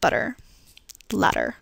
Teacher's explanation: where the tongue flaps very quickly for that middle consonant instead of forming a strong D sound